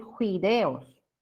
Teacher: en la zona amazónica, alternancia consonántica de la F con la J, ¿no? Fideos van a decir juideos.